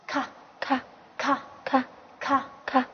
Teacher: 发音方法是送气清塞音 。对，送气好，一起读一下咔咔咔咔咔咔。那么30个辅音字母里面，有些字它单独出现的时候已经成为一个独立的单词。那么咔的话是什么意思呢？咔的话是嘴巴的意思。对，是嘴巴的意思。咔，那么再给它组个词咔哇。咔哇。咔哇是雪的意思，对吧？好，那么雪域是咔哇尖，朋友咔哇尖，对吧？好，咔萨咔萨咔萨咔萨是什么意思？是昨天的意思。对，是昨天的意思。